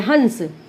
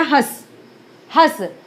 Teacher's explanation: बहुत कम नासिका का प्रयोग हुआ, तो इसलिए इसको हम अर्धनासिक्य बोलते हैं